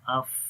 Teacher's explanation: فا کے اندر صفت ہمس ہے، سانس جاری رہتا ہے اف. رخاوت آواز جاری رہتی ہے.